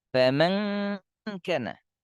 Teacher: makhraj dengung ikhfa hakiki, rongga hidung, dengungnya sempurna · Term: dengung sempurna